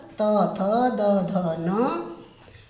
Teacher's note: ऋतु लसानाम दंतः, दांत बहुत सारे हैं। ऋ तू से त वर्ग त थ द ध न, लसानाम यानी ल और स, इनका उच्चारण स्थान है दांत दंतः। और इनसे बोले जाने वाले वर्ण कहलाएंगे दंत्यः।